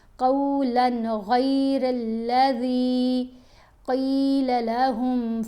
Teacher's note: یہاں پر یہاں قولاً، لام کے اوپر تنوین ہے، 2 زبر ہیں، اس کے بعد غین ہے، غین حروف حلقی میں شامل ہے، تو اب ہم نے جب تنوین کو ادا کرنا ہے تو غنہ کیے بغیر ادا کرنا ہے۔ قولاً پڑھیں گے تو غلط ہو جائے گا، ہم نے اس کو جلدی سے ادا کرنا ہوتا ہے، غنہ نہیں کرنا۔